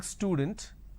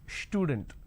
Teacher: they add sh they start it with SH